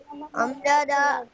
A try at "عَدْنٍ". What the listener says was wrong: عین ہے بیٹا، عدن وقفا عدن،